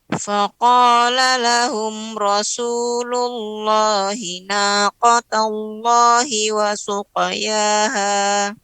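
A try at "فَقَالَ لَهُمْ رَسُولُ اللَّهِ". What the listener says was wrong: Ra di sini tebal. Faqala lahum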